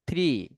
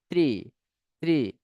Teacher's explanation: থ সাউন্ড কি হয়, মানে জিহ্বার অগ্রভাগটা দুই দাঁতের মাঝখানে কামড়ের মতো লাগবে